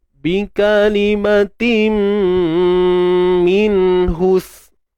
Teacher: Tanwin bertemu mim. Dan kat sini kita dengung dengan sempurna tuan-puan. Dengung sempurna. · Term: idgham bi gunnah